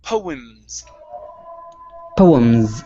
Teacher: there isn't a vowel in between the m and the s so go straight from the m to the s